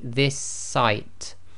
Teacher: this site so if you say that quickly this site okay so the two s's Become One S and that's really what a doubled up sound is